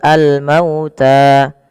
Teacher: Di sini mauta sebelumnya di lafal mau yaitu ada bacaan lin yaitu lembut di dalam pelafalannya karena ee ada huruf wau sukun didahului dengan huruf fathah maka dia lembut dalam pelafalannya